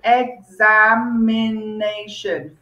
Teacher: Five syllables. Okay. And the stress is on the fourth syllable. The penultimate syllable.